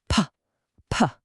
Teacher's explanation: Press your lips together nice and firm. Now, no voice at all. Just release a sudden, strong burst of air as you open them.